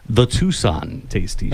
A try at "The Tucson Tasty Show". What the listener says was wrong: It doesn't have to be so pronounced. Just a little.